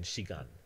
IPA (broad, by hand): ʃigan